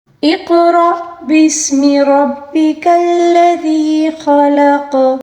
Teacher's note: را کے اوپر زبر ہے، را کو پر پڑھیں گے، ٹھیک ہے۔ اقرأ، اسی طرح حمزہ کے اوپر جو ساکن ہے اس کو ہم جھٹکے کے ساتھ پڑھیں گے، ٹھیک ہے۔